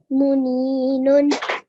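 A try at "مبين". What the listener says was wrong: This is a B.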